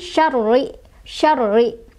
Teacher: ada tasydidnya di atas ro. Jadi ini agak ditekan